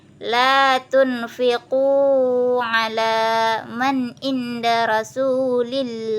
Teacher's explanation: Terjadi pada bacaan la tunfiqu ala man inda rasulillah, di mana huruf nun atau tanwin bertemu dengan huruf lam kata ala sehingga kedua huruf tersebut bergabung tanpa gunnah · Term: idgham bila gunnah